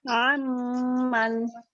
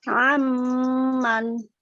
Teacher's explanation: huruf Apun yang berada di antara harakat dengan harakat yang bersyaddah jadi bacanya bukan an tapi am langsung masuk ke mim